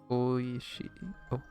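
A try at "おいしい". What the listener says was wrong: Don't pronounce it oi. Okay. Oishi. Oishi. It's supposed to last longer, right?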